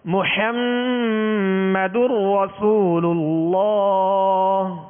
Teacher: اللہ عز و جل کے لام سے پہلے پیش یا زبر ہو تو پر کریں گے، یعنی موٹا پڑھیں گے. اللہ عز و جل کے لام کو پر یعنی موٹا پڑھیں گے